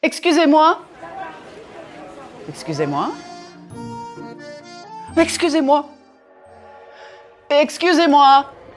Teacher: Even though I varied the intonation to convey different meanings, I never punched the words too much. I didn't use a very wide range of pitch either. French is much more subtle than American English in many ways.